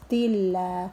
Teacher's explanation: lafzul jalalah ini jika didahului dengan kasroh dibaca tipis